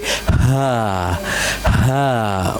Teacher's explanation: This sound come from the lower portion of throat.